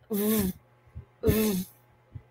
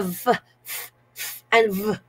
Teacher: closely to the lower lip v v and then okay so the upper teeth of course touches the lower lip